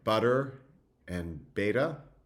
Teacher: It can be flapped, so in words like butter and beta, you get a flap t